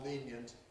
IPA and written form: ˈliːnjənt (lenient)